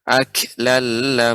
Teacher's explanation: harus lebih diperhatikan lagi sifat kaf yang tetap mengalir